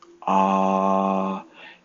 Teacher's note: When you say Aleph to create the Ah sound, your tongue has to sit in between the top and the bottom of your mouth. Ah, your tongue is not resting on the floor of your mouth nor the roof, it is right in the middle